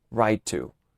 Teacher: Cuando tienes dos sonidos de consonantes o cuando tienes dos sonidos de consonantes similares, no tienes que pronunciar la consonante dos veces, sino una sola vez, alargando un poco este sonido. Por ejemplo, right to estaría mal, sino right to, simplemente pronunciando el sonido de la T una sola vez y alargando un poco el sonido.